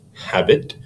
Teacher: a stressed syllable followed by an unstressed syllable